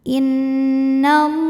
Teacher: Karena lam barisnya fathah panjang maka lam panjang dua harakat. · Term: mad thobi muqaddar